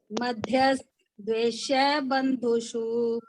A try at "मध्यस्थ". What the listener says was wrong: हाँ जी, जहाँ अरिका ने मध्यस्थ बोला, आपने थ को थोड़ा सा लंबा करोगे, पूरा थ है मध्यस्थ द्वेष्य बंधुषु। थ पूरा है।